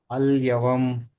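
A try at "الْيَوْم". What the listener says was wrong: యా ఫతహ వావ్ సుకూన్. ఔత్వం రావాలి. అల్ యౌమ్. ఔత్వము, యాలీన్ని ఐత్వంతో చదవండి.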